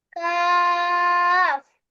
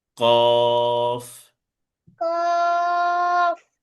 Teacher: কাফ হচ্ছে চিকন ভাবে স্বাভাবিক ভাবে, আর কফ হচ্ছে মোটা আওয়াজে ক